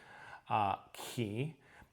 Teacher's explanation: The kappa is a harder K, and the key has a little bit of a aspirate to it. So it's like you're blowing air when you do it.